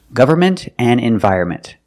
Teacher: With both of these words, the N is silent. We don't pronounce the N in the middle of these words.